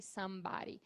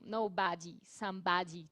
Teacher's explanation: É uma variação da pronúncia americana que esse D pode ficar com um som de R